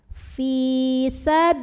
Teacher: lam pada lafaz Allah yang dibaca secara tarqiq. Kenapa? Karena lihat kita huruf sebelumnya, huruf lam barisnya kasrah, maka ini lillah bacanya tipis, bukan lillah tapi lillah. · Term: lam jalalah